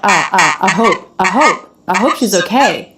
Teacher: the word I, that's the I diphthong, it's unstressed here. I don't really hear her pronouncing both of those sounds. I. It's more like, I hope she's okay.